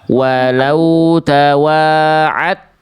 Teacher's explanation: cukup meleburkan secara sempurna huruf yang di awal ke huruf berikutnya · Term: idgham mutajanisain